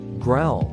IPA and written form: ɡraʊl (growl)